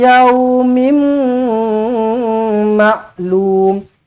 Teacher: jumpa dengan mim sabdu terus rapatkan bibir dengungkan dua harakat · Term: idgham al gunnah